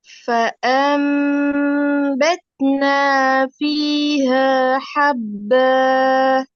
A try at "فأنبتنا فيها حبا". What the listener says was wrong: ஹப்பா. அந்த பான்னு போக கூடாது. ஹப்ப கீழ் நோக்கி வந்துடணும். فأنبتنا فيها حبا. ஹப்ப ப அல்ல ப. கீழுக்கு பணிய மாட்டேங்குது. தான் போக போகுது. ப அல்ல. ஹப்ப. ப. ஹப்ப. ஷத்த வச்சிட்டு கீழே கெடுங்க.